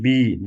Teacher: बी बी बोलेंगे तो हमारे गले पे वाइब्रेशन होता है। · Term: वॉइस्ट